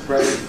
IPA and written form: bredθ (breadth)